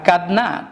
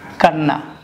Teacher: দ আগে ন পরে, তো নয়ের কারণে দটা ন হয়ে গেছে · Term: পরাগত সমীকরণ